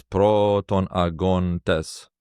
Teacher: the final dactyl is two long syllables